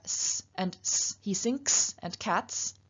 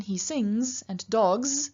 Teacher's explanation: We have S and S, he sinks and cats, but in he sings and dogs, it's not a S, it's a Z, it's voiced counterpart